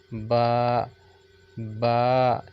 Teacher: तरी मतलब, ठीक है, लिक्विड जिसे आप कह लें, और खुश्की मतलब ड्राई जिसे कह लें। ठीक है, तो बा जो है दोनों होंठों के अंदरूनी तरी वाले हिस्से को मिलाने से अदा होता है, बा, बा। ठीक है, तरी वाला हिस्सा।